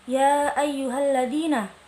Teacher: Ya ayyuhalladzina, hukum bacaannya mad jaiz munfasil karena ada mad tabi'i bertemu dengan huruf hamzah tidak dalam satu kata dan panjangnya 4-5 harokat